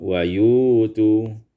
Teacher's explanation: wa yu'tu ibdalul hamzati wawan, ditukar hamzah dengan waw